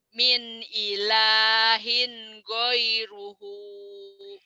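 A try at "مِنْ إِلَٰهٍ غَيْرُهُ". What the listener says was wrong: min ilahin ghairuhu. Bagus.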